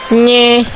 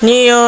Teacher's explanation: Mandarin N is produced by most speaker with the tip of tongue in a slightly more forward position than in English.